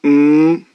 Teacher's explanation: a nasal sound so if we make a m sound M can you hear it coming through the nose